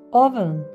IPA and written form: ˈʌv.ən (oven)